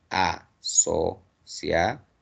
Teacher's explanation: la mayor fuerza de voz está en la última sílaba, entonces es una palabra aguda.